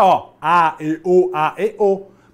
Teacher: para produzir a e o a única coisa que eu fiz aqui fui mudar a formação dos meus lábios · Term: fonema vocálico